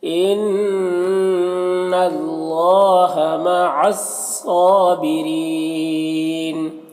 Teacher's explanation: مع الصابرین، صاد حروف مستعلیہ میں سے پر پڑھیں گے، کھڑا زبر ہے، ایک الف کے برابر کھینچیں گے، یہاں پر را کے نیچے زیر ہے، را کو باریک پڑھیں گے، اور یا مدہ ہے، اور اگر وقف کریں گے تو نون کا زبر سکون سے بدل جائے گا تو مد عارض وقفی ہوگا